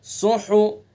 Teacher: تو ہا کو حلق سے ادا کریں گے